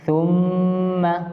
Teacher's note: थुम्मा मीम पर तशदीद है, थुम्मा यहाँ 1 अलिफ के बराबर गुन्ना करके पढ़ेंगे